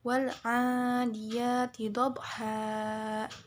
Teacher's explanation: Mad iwad karena ada tanwin yang diwakafkan dan dibacanya panjang dua harakat